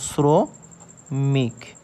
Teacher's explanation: আমাদের কিন্তু দন্তস্য, এস এর মতন উচ্চারণ হচ্ছে